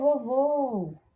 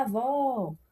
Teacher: Então perceba que eu vou puxar mais para a última sílaba, vou entonar mais na última sílaba. Por isso que são palavras oxítonas, porque a sua última sílaba é a mais forte.